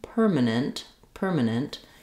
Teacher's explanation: the letter a and the letter e are extremely reduced vowels you'll see them written as vowel schah in the dictionary as · in the word permanent, we have the stress on the first syllable per, and we have a strong a clear vowel in that syllable.